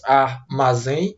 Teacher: Armazém. E a sílaba que eu pronuncio com mais intensidade é a sílaba zen. Então, essa palavra, a palavra armazém, é uma palavra chamada de oxítona.